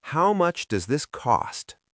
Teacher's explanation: the s sound at the end of does often blends with the th sound in this. It becomes does this almost as one word. And the t at the end of cost can also be very light or glottle. · the t at the end of cost can also be very light or glottle. Meaning your throat stops the air rather than your tongue touching the roof of your mouth. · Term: glottal